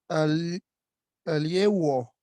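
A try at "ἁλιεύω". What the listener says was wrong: Ya, solo acá hay que pronunciar como J porque tiene espíritu rudo, Acá.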